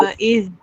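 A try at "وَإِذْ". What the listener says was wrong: Betul dah hujung lidah. Tapi dia jangan lantunkan. Wa id qul. Wa id qul. Jangan orang panggil, jangan gogek. Duduk situ ya. Duduk pada makhraj dia.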